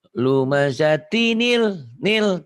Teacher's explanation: Hamzah wasol. Hamzah alif yang diwasol apabila disambung, hamzah wasol itu tidak bunyi. Kalau nggak diwasol, bunyi a ya.